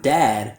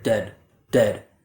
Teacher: So the mistake I often hear is that students don't get enough open quality for that a like bat vowel